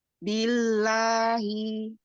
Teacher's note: ada tawasudnya sedikit ya di lam, ditahan lagi sedikit lagi. billahi. Ya, kalau yang awalan tadi terlalu cepat.